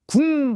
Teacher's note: 국의 기역 받침이 뒤에 오는 물의 미음을 만나서 자기도 모르게 궁 하고 이응 소리로 바뀌는 거예요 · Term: 비음화